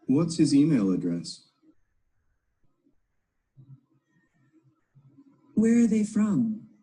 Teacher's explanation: falling intonation in information questions